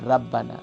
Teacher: با کے اوپر جو تشدید ہے وہ تشدید نہیں پڑھتے، یعنی اس کو ڈبل لیٹر ڈبل ساؤنڈ نہیں کرتے